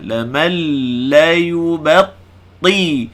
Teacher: Nun sakinah bertemu lam, idgham tanpa gunnah.